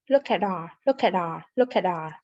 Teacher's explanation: my love the t in act is what we call a flap t it has a d sound when connect with r look at our look at our look